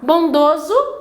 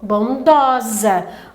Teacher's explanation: E quando eles são passados para o feminino, então ele vai fazer uma flexão na tua entonação. Então, no masculino você tem ele fechado, o O, e para o feminino você vai falar ele aberto